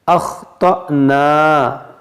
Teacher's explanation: یہاں پر دیکھیں حمزہ ساکنہ ہے، اس کو جھٹکا دے کر پڑھیں گے